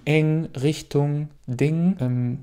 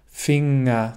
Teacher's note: So höre ich oft, dass sie Dinge sagen oder Richtunge. Dieses G sprichst du nicht aus, sondern es ist einfach ein Klang, ein nasales N.